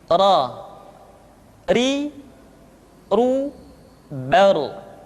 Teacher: Berikutnya adalah huruf ra. Diucapkan dengan menyentuhkan punggung lidah dengan langit-langit.